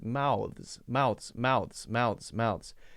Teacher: It has to flick out, go between the teeth for just a tiny moment, then come back and be the Z sound. Mouths. Even when I slow it down, it's only sticking out for a second.